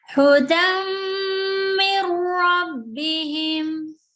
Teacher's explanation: Okay, there is no nasal because of because nun sakin is followed by ra. So when nun sakin is followed by ra, we would totally ignore the nun.